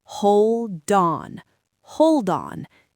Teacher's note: But if you connect them, the D moves over to the O.